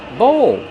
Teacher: Use the long O like no and go plus the dark L.